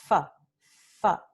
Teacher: Para pronunciar f, nosotros usamos el articulador activo del labio inferior y lo tocamos a los dientes superiores. F, f. Labio inferior, dientes superiores.